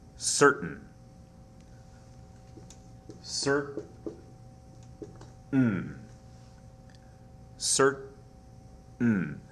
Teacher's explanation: There is a very faint T sound here, and the vowel sound is not really heard. It's kind of a schwa sound here.